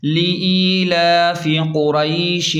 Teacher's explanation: شین کی آواز کو صاف نکالیں اور را کو پر پڑھیں یعنی موٹا پڑھیں، ملا کر رواں پڑھیں۔